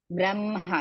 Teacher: First you should say ma, then ha.